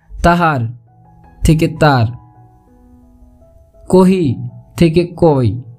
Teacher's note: রাঢ়ী উপভাষায় পদমধ্যস্থ হকারের লোপ প্রবণতা লক্ষ্য করা যায়, যেমন তাহার থেকে তার, কহি থেকে কই।